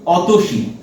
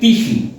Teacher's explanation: শব্দের প্রথমে স্বরধ্বনি ছিল কিন্তু উচ্চারণের সময় সেই স্বরধ্বনি লুপ্ত হয়ে যাচ্ছে